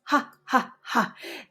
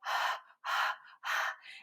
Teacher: So we pronounce it as an out breath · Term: the aspirated H